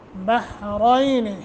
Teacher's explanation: रा को मोटा करेंगे और या साकिन माक़बल फ़तह हरफ़े लीन बनता है 1 सेकंड की मद करते हुए